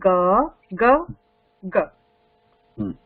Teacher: When we pronounce ga, there is a vibration.